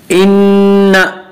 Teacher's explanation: नून मुशद्दद गुन्ना होगा, एक अलिफ की मिकदार गुन्ना करेंगे